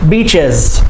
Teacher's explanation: Beaches, 2 syllables, plural, beaches, and the S makes the Z sound